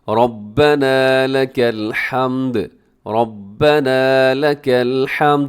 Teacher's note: ربنا میں را موٹا ہے، آخر میں تھوڑا لمبا کیجیے گا کیونکہ الف ہے اس کے ساتھ